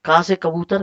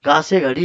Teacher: का वर्ग किससे बोला जाता है? कंठ से।